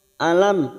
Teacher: mim sukun bertemu ya idhar safawi dibaca jelas